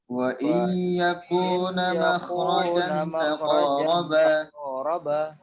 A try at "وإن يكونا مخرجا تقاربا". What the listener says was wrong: وإن يكونا nanya panjang ya. وإن يكونا مخرجا تقاربا